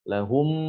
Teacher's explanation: ketika kita mengucapkan mim sukun ya, pada saat bertemu dengan huruf mim, itu agar jangan sampai kita memanjangkan ya, memanjangkan huruf mim ya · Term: idgham asy-syafawi